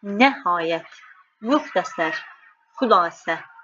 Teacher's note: Bax bunlar modal söz kimi işləndikdə vurğunu ön hecada olmasını tələb edir.